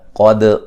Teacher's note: قاف کو موٹا ادا کریں گے، دال پہ قلقلہ کریں گے